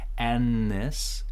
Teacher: N is very strong. It's actually canceling this TH as well, so this whole thing sounds like annis. So it's like a longer N.